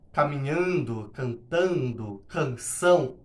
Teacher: assonância tá na repetição desse som nasal